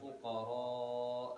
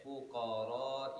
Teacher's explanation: kita baca dengan panjang fuqara, ataupun kita baca dengan pendek fuqara